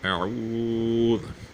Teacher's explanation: واو حرف علت ہے آخر سے پہلے آ رہا ہے اس سے اسے کھینچا گیا